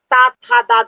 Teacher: और ता था दादा बोलकर देख सकते हो आप, दांतों से जीभ टच होती है इसलिए इसको दंत व्यंजन कहेंगे